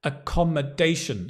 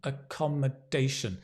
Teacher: Accommodation, stress on the dation.